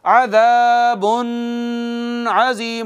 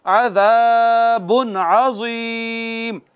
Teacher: आगे है हरूफे इजहार में से आइन, आइन है नाज़रीन किराम, आइन हरूफ इजहार में से है, तो नून तनवीन पर इजहार करेंगे और यूं नहीं पढ़ेंगे अज़ाबुन अज़ीम, नहीं, इख्फा नहीं करना, इजहार करना है